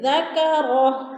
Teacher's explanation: ذکرہ الٹا پیش وقف کی صورت میں ساکن کر کے پڑھیں گے